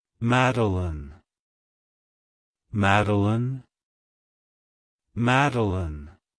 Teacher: to pronounce it correctly emphasize the first syllable mad and then pronounce the rest of the name as Alin